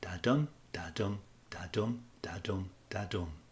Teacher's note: Each two syllables make up a metric foot, and there are five of these in a line. As you read the poem, the stress is placed on the second syllable. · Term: iambic pentameter